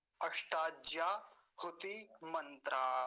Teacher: अष्टा में एक ही काम की बात है यह मूर्धन्य सकार मूर्धन्य सकार का ध्यान रखेंगे